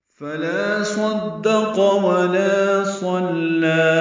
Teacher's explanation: صدق میں صاد اور قاف پورے بیچ میں دال باریک ہے. صدق ولا الف مدہ ہے. · فا کو جلدی پڑھنا ہے، لا الف مدہ ہے تو حرکات لمبا کرنا ہے. صدق میں صاد اور قاف پورے بیچ میں دال باریک ہے.